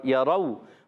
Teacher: یرونہ, یا پر زبر ہے, حرکت کو نہیں کہتے گے. یرو, واو ساکن سے پہلے زبر آ جائے, واو لین ہوتا ہے, نرمی سے ادا کریں گے. · یرو, واو ساکن سے پہلے زبر آ جائے, واو لین ہوتا ہے, نرمی سے ادا کریں گے. را پر زبر آنے کی وجہ سے را پر بھی ہو جائے گا, موٹا پڑھیں گے.